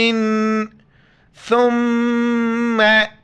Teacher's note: ثا کے وقت زبان باہر نکالنا ہے